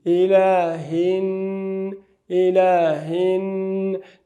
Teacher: دغه نون باید 2 حرکته غنه. لیکن یو خبره بله چې دغه حرکات به زمونږ د تلاوت د اسالیبو په اندازه اوسي.